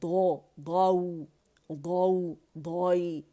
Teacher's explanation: حافۃ اللسان، اقصی الحافہ دونوں سائڈ کا، مولرز اور پری مولرز جو ہیں 5 رائٹ سائڈ کے، 5 لیفٹ کے، اور مسوڑوں کو مضبوطی سے لگائیں تو ضاد ادا ہوتا ہے